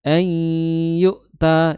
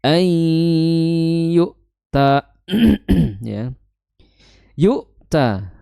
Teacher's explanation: Kemudian dibaca dengan disertai dua harakat dengung. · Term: idgham bighunah